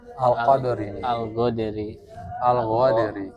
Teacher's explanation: mencampur suara kaf dengan gin